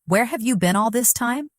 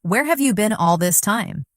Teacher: The stress usually falls on where and been.